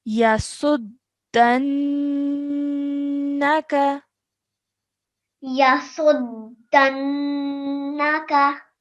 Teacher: you held that nasal sound in your nose for 2 seconds and then you let it go to produce the fatha sound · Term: noon ghunna sound